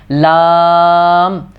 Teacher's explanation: ناک میں آواز نہیں لے کے جانی